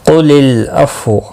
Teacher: قُلِ الْعَفْوَ واو ساکن پڑھا جائے گا، وقف کی صورت میں قاف مستعلیہ ہے، پر پڑھا جائے گا۔ لام ساکن کو ہلانا نہیں، اور ملانے کی صورت میں واو کی حرکت کو بھی پڑھا جائے گا۔